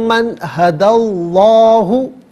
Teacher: اچھا، اس میں اللہ کی حرف لام سے پہلا والا جو حرف ہے اس پر زبر یا پیش ہو تو اس لام کو پر پڑھتے ہیں، زیر ہو تو باریک پڑھتے ہیں، تو یہاں چونکہ دال پر زبر ہے تو اس میں اللہ کی حرف لام کو پر کر کے پڑھا جائے گا۔ اور من میں بھی جو نون ساکن ہے اس کے بعد ہا ہے، حرف علقی ہے، تو ناظرین نون ساکن پر یہاں اظہار کریں گے، غنہ یا اخفا نہیں کیا جائے گا۔